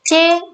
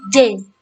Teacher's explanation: Perbedaan antara konsonan C dengan semivokal J, kalau konsonan C termasuk bunyi yang tidak bersuara, sedangkan semivokal J bersuara.